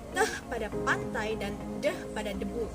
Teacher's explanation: Yang kedua, konsonan hambat dental yakni teh dan deh. Dilapalkan dengan ujung lidah ditempelkan pada gusi. Contohnya teh pada pantai dan deh pada debu.